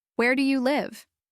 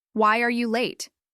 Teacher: Next, let's practice WH questions. These usually have a falling intonation because you are not just expecting yes or no, but more detailed information. Listen to my voice going down at the end of each question.